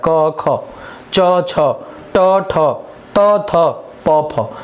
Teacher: अघोष है, नाम से स्पष्ट है, घोष नहीं होगा, कंपन नहीं होगा। तो जिन ध्वनियों के उच्चारण में स्वर यंत्रियों में कंपन नहीं होता उन्हें हम कहते हैं अघोष · प्रत्येक वर्ग का पहला और दूसरा व्यंजन तथा साथ ही सभी स श श स तीनों ये होते हैं अघोष